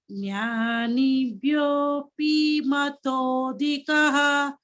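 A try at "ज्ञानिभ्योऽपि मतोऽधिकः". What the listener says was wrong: This P is Hrasva. Jnanebhyopi matodhikaha. You are again elongating this. Jnanibhyopi. P only. It's not P. Dirgha is not there. Jnanebhyopi matodhikaha.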